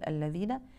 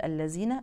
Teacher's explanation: ابرز الاخطاء الشائعه فيها هو تبديل الذال بزاي فننتبه ان ما حدش يقول الذين نقول الذين ننتبه لعدم قلقله